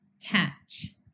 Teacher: The a sound was voiced because all vowels are. K and ch are unvoiced consonant sounds because they did not involve any vocal cord vibration to produce.